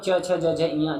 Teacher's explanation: तालब में च छ ज झ य जिसे हम च वर्ग भी कहते हैं